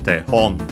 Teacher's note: it's accented on the ho, or tehon. It can be used for model handwriting, and that could be why we have that hand in the compound, and then became model in general.